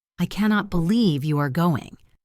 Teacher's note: Flat tone sounds like a simple statement of fact.